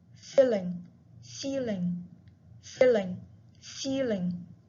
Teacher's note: If you are in front of a mirror, you can see that when you say short E, your mouth is more open than the long E.